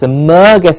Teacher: the merge gets a stress emerges the stress emergencies not it's not emergency its emergency emerge